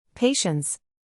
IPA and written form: ˈpeɪ.ʃəns (Patience)